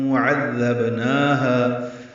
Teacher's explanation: عین وسط حلق سے ادا کریں گے